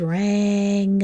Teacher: when I put a G on the end of ran, it stops making the apple sound. It makes an unexpected sound.